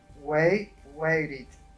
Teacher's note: La T se pronunció como una R porque quedó rodeada o en medio de vocales. Wait, waited.